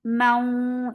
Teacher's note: And make it 2 counts long. Mau, idgham with gunna. And give a longer gunna here. Mau, for wow, circle it for fatha, open your jaws and attach with a raw.